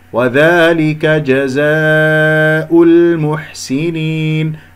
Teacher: جزاء فيها حرف المد وألف والهمزة كلمة واحدة، مد واجب متصل 4 و5 حركات